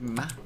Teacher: the bilabial nasal sound, ma, is the first sound, easiest sound for babies to make